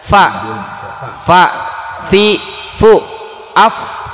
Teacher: bibir bawah bagian dalam bertemu dengan ujung gigi bagian atas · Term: huruf fa